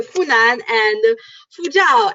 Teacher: Always the H and the F get mixed up.